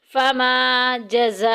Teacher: جزا میں دیکھیں الف مدہ اور حروف مدہ کے بعد اسی کلمے میں حمزہ آ گئی ہے مد متصل 2 الف کے برابر لمبا کریں گے